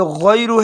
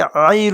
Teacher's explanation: فلہم اجر غیر ممنون، یہ غیر ہے، غین موٹا ہے، عیر نہیں ہے، عین باریک نہیں ہے بلکہ یہ موٹا غین ہے، اس کو موٹا کر کے پڑھیں گے۔